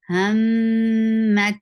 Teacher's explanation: Mim will get sifa of gunna, and this is akmal gunna. Give a nice time here.